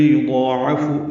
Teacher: عین وسط حلق سے ادا کریں گے اور ضاد کو 2 حرکات لمبا بھی کرنا ہے، فا کو